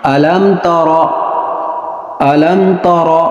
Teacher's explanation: میم ساکن کے بعد با اور میم کے علاوہ کوئی بھی حرف آ جائے تو میم ساکن میں اظہار شفوی یعنی غنہ نہیں کریں گے